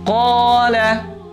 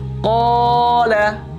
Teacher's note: Qala murni dari tenggorokan dan mulut. Qala tidak masuk ke dalam hidung. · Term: al-jauf